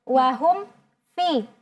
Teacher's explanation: jangan sampai kita dengungkan. Padahal ya hukumnya adalah al-izhar saja.